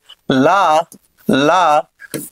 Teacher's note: మరి పార్శ్వములు అని అంటే ఏంటంటే పక్కలు అని అర్థం. అంటే జిహ్వ యొక్క ఇరు పార్శ్వాల నుండి వాయువు నిర్గమించుట చేత జరిగినటువంటి ప్రయత్నాన్ని పార్శ్విక ప్రయత్నం అని అంటారు